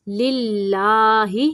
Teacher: یہاں پہ اللہ کا لام باریک پڑھنا ہے، موٹا نہیں پڑھنا۔ للہ، کھڑی زبر کو لمبا کریں گے۔